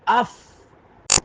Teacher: اوپر والے دانت نیچے والے ہونٹ کے درمیان میں اگر رکھیں ثنایا علیہ کا سرا, نیچے والے ہونٹ کے درمیان والے حصے پر رکھیں تو اس سے فا ادا ہوتا ہے